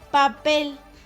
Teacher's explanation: El acento recae en la sílaba pel. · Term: acento prosódico